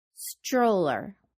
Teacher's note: here stroller can be said with the consonant sound ch. Stroller. Remember to round your lips to include the W sound in the O vowel sound. · When the t hits the r in English, many times it becomes the ch sound.